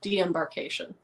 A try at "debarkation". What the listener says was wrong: You were just mixing them together.